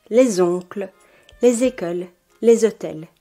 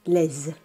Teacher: in front of a vowel or silent h, les is pronounced /lez/